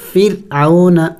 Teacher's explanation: دیکھیں میں را کو باریک پڑھ رہا ہوں، فرعون. اس کو باریک پڑھنا ہوگا اس لیے کہ را کے اوپر جب سکون آ جائے اور اس سے پہلے زبر ہو تو اس را کو باریک کر کے پڑھا جاتا ہے.